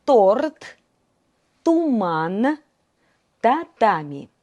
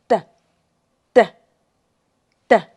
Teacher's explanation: La punta de la lengua se aprieta contra los dientes o los alveolos superiores. A la lengua está activa y tensa. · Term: la t normal, dura